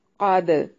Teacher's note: قاف کو موٹا ادا کرنا ہے، اور دال پہ قلقلہ ہوگا، کیونکہ دال حروف قلقلہ میں سے ہے، اس لیے اسے ہلا کر پڑھیں گے۔